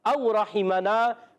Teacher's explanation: او حمزہ کو خوب واضح کریں گے، مگر واو لین کو نرمی سے ادا کریں گے. واو ساکن سے پہلے زبر آ رہا ہے، واو لین ہے، نرمی سے ادا کرنا ہے.